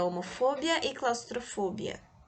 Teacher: Não é o bia mais que a sílaba tônica, é o fo.